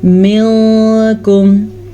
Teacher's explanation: نون ساکن کو ہم چھپے ہوئے غنے کے ساتھ پڑھیں گے